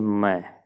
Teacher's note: ध्वनि नाक और मुंह दोनों से निकलती हो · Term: अनुनासिक